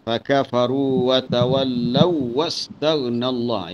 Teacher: Itu kita boleh idghamkan terus waw yang pertama ke dalam waw yang kedua